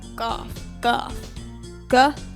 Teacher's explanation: cough is like a k sound but you say it further back in the mouth